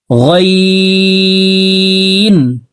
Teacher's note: গাইন হরফকে হলকের শেষ থেকে পড়ব।